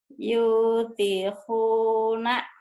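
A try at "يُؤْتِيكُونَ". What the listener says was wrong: yutikuna, bukan yutihuna, yutikuna.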